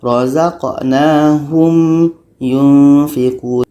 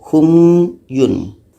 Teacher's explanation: Jadi, mim ini kita harus baca jelas dan ya pun jelas. Dikarenakan ini adalah syafawi, jadi bunyi mim ni harus jelas.